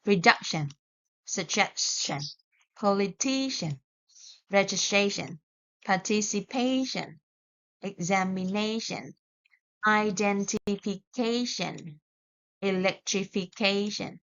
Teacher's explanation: For these words, we put the stress on the second last syllable